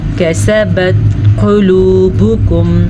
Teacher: क़ाफ को पुर पढ़ेंगे क्योंकि ये मोटी क़ाफ है।